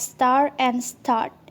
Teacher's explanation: Standard English has lost the pronunciation of R following vowels in words like star and start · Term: post-vocalic